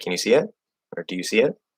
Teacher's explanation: if you say um like uh like do you see it or can you see it they kind of go up